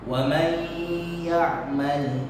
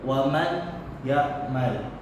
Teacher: tapi suara nun mati itu masuk terus sama huruf y